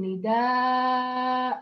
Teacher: إذا أريد أن أقف عليها أبدل هذا التنوين ألفاً وأقول نداء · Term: ألف ناشئة